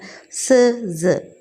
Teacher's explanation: ചില സൗണ്ട്സിൻ്റെ പ്രൊഡക്ഷൻ എന്ത് ചെയ്യുന്നുണ്ട്, ഇത് ഹെൽപ്പ് ചെയ്യുന്നുണ്ട്. അപ്പോൾ ടീത്ത് റിഡ്ജ് നമ്മൾ യൂസ് ചെയ്തിട്ട് പ്രൊനൗൺസ് ചെയ്യുന്ന ഒരു സൗണ്ടാണ്